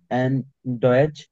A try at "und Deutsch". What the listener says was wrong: Note অ্যান্ড, অ্যান্ড না তো, অন্ধ্র।